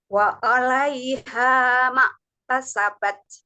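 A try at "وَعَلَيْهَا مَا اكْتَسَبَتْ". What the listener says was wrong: Wa'a untuk huruf ain. Nah, ainnya itu belum pada makhrajnya ya. Jadi sebetulnya ain itu letaknya itu di tengah-tengah tenggorokan ya, di tenggorokan yang bagian tengah ya. Dia bareng-bareng dengan huruf H, huruf H yang sempit ya. H, huruf H ya.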